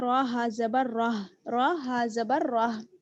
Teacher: अगर हम आयत पर ठहरेंगे तो हम आखिर में जो हमारे पास हा है उसको हम साकिन कर देंगे